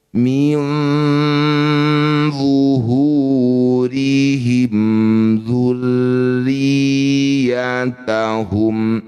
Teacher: bunyi nun dengungkan dua harakat. Ketika dengung lisan kita sudah bersiap untuk bunyikan d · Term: ikhfa hakiki